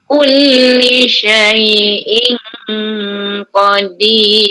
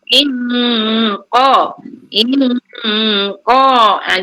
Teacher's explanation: dalam masa dengung banyak bila dah cukup dengung baru pijak makhraj qaf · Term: ikhfa yang tebal